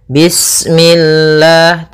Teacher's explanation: Kemudian lafal Allah ketika sebelumnya kasrah maka dia dibaca dengan tipis ya dengan L.